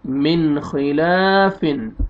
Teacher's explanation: نون ساکن کے بعد حروف حلقی میں سے خا آ رہا ہے تو یہاں پہ اظہار کریں گے